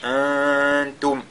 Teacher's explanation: Il faudra donc que le nun, n'est-ce pas, soit nazié. il soit dissimulé, n'est-ce pas, dans la fosse nasale. Antum, de cette façon-là. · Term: al-ikhfa